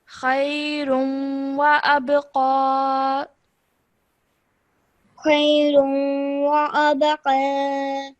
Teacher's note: I bounced off the letter of the ba because ba is one of the qalqala letters when it has a sukoon on it. So we bounce off the sound.